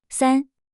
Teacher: First tone high flat stays high and steady.